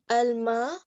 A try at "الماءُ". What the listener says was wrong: اس کے last letter پہ حرکت لگانی ہے آپ نے. عربی جو ہے نا وہ عربی دیکھیں اردو زبان میں ہر لفظ ساکن پڑھا جاتا ہے. کتاب، قلم ہے نا، آدمی، ہر لفظ ساکن.